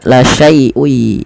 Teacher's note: memasukkan tanwinnya pada lafal ketemu masukkan kepada huruf ya, sehingga suara nun sukunnya hilang. Kan awalnya la syai'un, ada nun dimatikan, ketemu ya langsung ke ya, la syai'ui. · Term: idgham bi gunnah